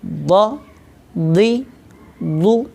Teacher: जब ज़बर को पढ़ना होता है तो आवाज़ और मुंह को खोलते हैं। ज़ेर को पढ़ते वक्त आवाज़ को नीचे गिराते हैं और पेश को पढ़ते वक्त होंठों को गोल करते हैं।